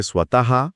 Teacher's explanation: स्वतः किंवा दुःख असे शब्द उच्चारतो तेव्हा त्या विसर् निसर्गाच्या ठिकाणी हवा ह सारख्या ध्वनीने किंचित जोरात बाहेर टाकली जाते >> हा म्हणजे स्वतः असा तो हलकासा उच्चार होतो >> हो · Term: विसर्ग